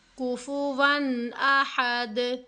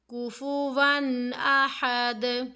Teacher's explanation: یا نون ساکن کی آواز ہوگی یا پھر تنوین ہوگی، اس کی آواز کو ظاہر کر کے پڑھیں گے. کیسے پڑھیں گے، کوفوون احد، رکنا نہیں ہے، فوراً سے آگے کوفوون احد. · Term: اظہار